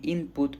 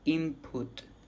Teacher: pronounce an M instead of an N